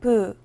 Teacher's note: 부는 입술에서 소리가 나는 자음으로 영어의 P와 비슷한 무성음입니다. 하지만 소리에 따라 유성음인 B처럼 소리가 나기도 해요.